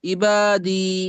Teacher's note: ইয়া মাদ্দাকে একালি পরিমাণ টান দিয়ে পড়তে হবে